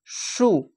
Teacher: সিন পেশ সু, এটা সদ। এটি এই সাউন্ডটি আসে গোল মুখ করে ওপর জিহ্বা ওপর তালুর দিকে লেগে